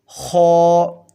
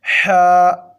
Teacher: جو نقطے والا خا ہے اس کو موٹا کر کے پڑھنا ہے، یعنی اس کی ہماری آواز ہوگی خو، اور جو بغیر نقطے کے ہے اس کو پڑھنا ہے حا۔